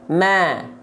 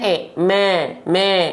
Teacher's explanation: A atau fathah, sambil senyum untuk menyempurnakan kadar tipis dari huruf tersebut.